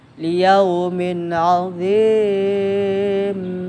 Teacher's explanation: idhar halqi, dibaca jelas, tidak berdengung. Nun sukun atau tanwin bertemu huruf hamzah, ha, ain, ha di Arab ghain, kha.